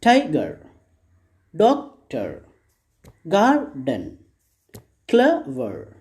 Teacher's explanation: then first syllable has been stressed these words have two syllables